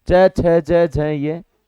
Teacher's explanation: च वर्ग च छ ज झ य इन सभी का उच्चारण तालू के द्वारा होता है आप बोल के देखोगे